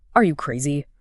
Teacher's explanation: A sharp rising intonation can definitely convey criticism